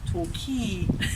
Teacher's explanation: the stress on the second syllable